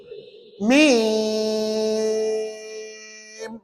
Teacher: Tak payah bunyi dengung apa-apa. Bunyi mim saja 6 harakat.